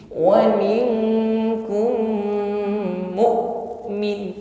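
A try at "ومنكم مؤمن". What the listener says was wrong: mu bersih ya, tertahan dengan sempurna hamzah sukun syiddah, mu'min, jangan mu'min ya, tidak mengalir huruf hamzah ya, likamali ghalbil makhraj, makhrajnya tertutup dengan sempurna sehingga suaranya tertahan,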